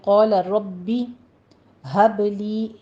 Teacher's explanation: حب میں با ساکن ہے، قلقلہ کریں گے